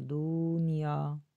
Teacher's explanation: یا کے ساتھ الف ہے، اس کو ایک الف کی مقدار کھینچیں گے